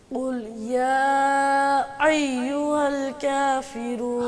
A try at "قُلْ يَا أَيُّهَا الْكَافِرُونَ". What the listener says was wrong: حمزہ کو سختی سے پڑھیں گے، اس کو عین کی طرح نہیں پڑھیں، ایو ایو یوں نہیں کہیں گے، ایو قل یا ایوہ الکافرون،